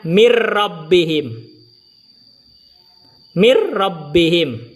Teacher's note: Nunnya masuk dalam ro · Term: idgham bila gunnah